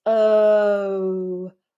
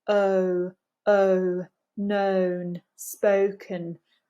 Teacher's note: Start in a neutral position and move into a round shape. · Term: double vowels